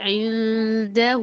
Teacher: اور ہا کو آپ لمبا کر سکتے ہیں، کتنا؟ 2 الف کے برابر